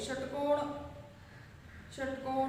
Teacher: षटकोण म्हणजे या ठिकाणी जीभ वळवून उच्चार होतो म्हणून याला काय म्हटलं जातं मूर्धन्य